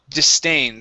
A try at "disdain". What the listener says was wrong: so this s instead of being disdain it's dis unvoiced s